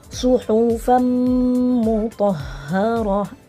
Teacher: harus disertai dengan gunnah, ditahan